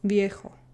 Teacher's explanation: mostly it's almost indistinguishable from a B. But a little bit you can tell, because your top teeth do touch your bottom lip